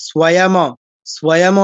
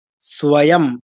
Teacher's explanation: আমরা আবার ম বলে এরকম না যে স্বয়ম, স্বয়ম নয়, স্বয়ং। অটা কিন্তু নেই, শুধু ম হসন্তটা। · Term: অনুস্বার